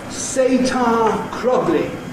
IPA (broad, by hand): s.eɪ.t.ɑː k.r.ɒ.g.l.i